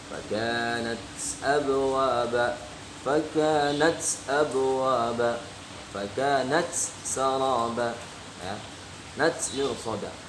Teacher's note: Semua huruf kaf dan ta apabila tersukun maka dibacanya berdesis hamas.